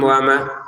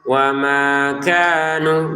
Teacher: Di sini baca jelas jangan tijaratuhum wama. Wama dua harakat panjang. Kanu dua harakat masing-masing panjang.